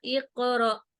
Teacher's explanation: اب اق پہ بھی میں نے قلقلہ کیا، یہ قلقلہ صغیرہ ہے، یہ قاف کلمہ کے اندر آ رہا ہے